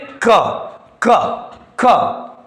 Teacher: अल्प जिस में वायु कम निकले अल्पप्राण